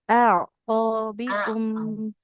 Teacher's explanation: Jangan a, tapi hamzahnya dulu, baru ke ain.